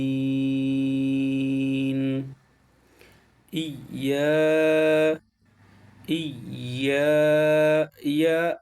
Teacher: মাখরাজটা জিহ্বার মধ্যখান থেকে তার বরাবর উপরে তালের সঙ্গে লাগবে